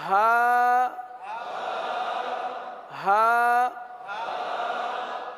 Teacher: हा हा हा हा हलक के आखिर वाले हिस्से से